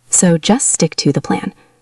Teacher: Listen to how she says stick to the plan. She stresses the word stick.